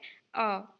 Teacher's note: हिंदी में अ स्वर केंद्रीय स्वर है। इसके उच्चारण में जीभ का मध्य भाग थोड़ा सा ऊपर उठता है। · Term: मध्य स्वर